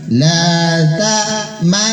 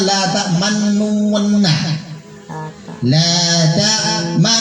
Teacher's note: Coba kita praktikan semuanya, jangan malu-malu, moncongnya sedikit terakhir ya. Dengungnya 3 harokat, akhir dengungnya moncong.